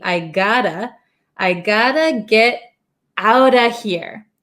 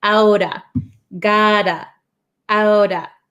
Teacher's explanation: So when we say it really quick, I gotta, this T becomes a flap T.